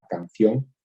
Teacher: La N de ustedes es una N velarizada, que se pronuncia en la parte del velo del paladar